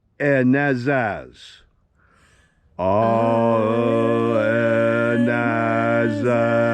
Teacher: slightly alter the alpha so it's pronounced a little bit more nasal, a little bit more like ah.